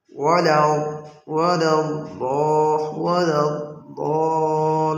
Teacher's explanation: ভুলটাকে গায়রিল মাগদুবি আলাইহিম ওয়ালাদ-দাল্লিন এখানে অনেকেই দদকে দালের মতো করে পড়ে। বুঝতে হবে দালটা কিন্তু শক্তিশালী শক্ত আর দদটা একটু নরম হবে। · দালের মাখরাজ হলো জিহ্বার আগা, সামনের উপরের দুই দাঁতের ঘোড়ার সঙ্গে লাগাইয়া দাল, আর দদের মাখরাজ হলো ভিন্ন, জিহ্বার গোড়ার কিনারা উপরের মাড়ি জাতের গোড়ার সঙ্গে লাগাইয়া।